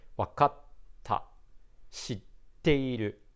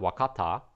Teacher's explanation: you hear a little sound stopping in the middle · So those are called glottal stops. So the small tsu is there to create that glottal stop sounds.